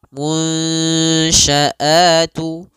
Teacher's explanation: Hilangnya itu baik secara keseluruhan sempurna atau masih ada sedikit, yaitu idgham naqis. Nah, caranya adalah kita samarkan nunnya kepada huruf shin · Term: ikhfa